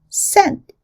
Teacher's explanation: And in the word scent, it is unreleased. It's as if the tongue stops at the end of the word without letting the air out much